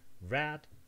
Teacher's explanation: The transcriptions are rad with this approximant R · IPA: ɹæd